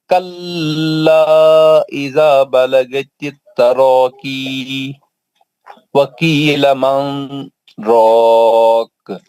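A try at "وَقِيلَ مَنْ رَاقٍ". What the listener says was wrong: نہیں غلط ہو گیا. آپ نون کے اخفا کی آواز میں کیوں چلے گئے؟ اظہار سے پڑھنا ہے. وقیل من من اخفا کی آواز میں چل گئے.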